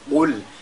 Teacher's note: la lettre Qaf, n'est-ce pas, qui est liée avec at-tafkhim